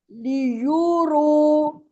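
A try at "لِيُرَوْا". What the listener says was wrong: रू नहीं है, रॉ वाव जबर क्या होता है, वाव लीन है, मद्दा नहीं है। را و زبر.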